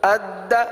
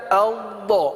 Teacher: دال میں جمع ہوئے لیکن قلقلہ بھی ہے، لیکن ضاد میں جماؤ تو تھوڑا سا محسوس ہوتا ہے، جماؤ کی سی صورت ہے، صفت استطالت ادا ہوتی ہے، لیکن آواز ٹوٹتی نہیں ہے، قلقلہ نہیں ہوتا، صحیح نا.